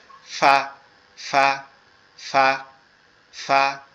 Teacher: নরম আওয়াজে আমাদের এই উপরের দুই দাঁত নিচের ঠোঁটের এই পেটের সাথে লাগবে, লেগে উচ্চারিত হবে ফা ফা ফা।